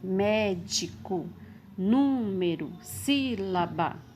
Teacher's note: a sílaba tônica é a antepenúltima, ou seja, a terceira sílaba voltando. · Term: proparoxítona